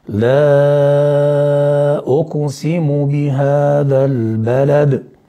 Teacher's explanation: وقلقلة الدال لما وقفنا عليها